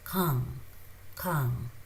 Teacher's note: Very softly you push the air.